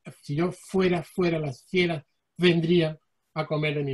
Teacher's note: una cualidad sonora de la letra F como consonante obstruida, fricativa, labiodental y sorda